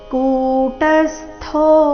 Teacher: ಇಲ್ಲಿ ಕು ದೀರ್ಘ ಟ ಮೇಲೆ ಆಘಾತ ಅರ್ಧ ಸೂರ್ತಿ ಥೋ ಮಹಾಪ್ರಾಣ ದೀರ್ಘ ಇದೆ ಕೂಟಸ್ತೋ ವಿಜಿತೇಂದ್ರಿಯಹ ವಿಜಿತೇಂದ್ರಿಯಹ ಇಲ್ಲಿ ತೆ